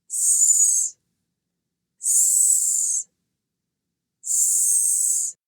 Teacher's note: The tip of the tongue is not touching the back of the teeth. Blow the air out over the top of your tongue. The sound comes from the front of the mouth. This is a non-voiced sound.